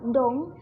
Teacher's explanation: konsonan D, menggunakan suara ujung lidah yang lafalnya seperti konsonan T dalam bahasa Indonesia. Contoh katanya yaitu seperti kata dong dilafalkan dengan kata tong yang artinya mengerti.